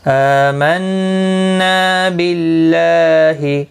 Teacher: ایک الف کی مقدار کے برابر کھینچ کر پڑھیں گے، باللہ اللہ کا لام زیر کی وجہ سے باریک پڑھا جائے گا